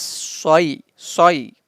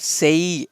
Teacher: We don't pull the sound of Ya here for 1 second, because whenever we have Kasra before Ya, we are supposed to pull the sound, stretch the sound. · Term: Yalin